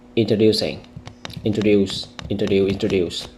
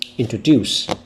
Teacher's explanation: you should read the word with a stronger stress on the third syllable